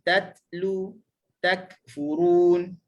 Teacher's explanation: Huruf ni apabila dia sukun, dia makin jelas. Huruf ta dengan huruf kaf, walaupun dia duduk sukun, angin dia kurang, angin dia tak banyak. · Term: hams